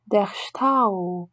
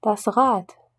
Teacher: En fin de mot, B, D, G se prononcent comme un P, T, K suivi d'une expiration.